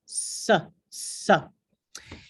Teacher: It is articulated with the predorso de la lengua, which goes up and produces a lot of friction against the alveolos. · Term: predorso alveolar